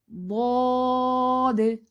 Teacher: اوپر والی 5 داڑیں یا تو دائیں طرف لگیں گی یا بائیں طرف، یا دونوں سائڈوں سے بھی اس کی کروٹ زبان کی لگ سکتی ہے ضاد کو ادا کرتے ہوئے۔